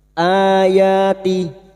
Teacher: mad badal cabang dari mad tabi'i, dua harokat kita panjangkan.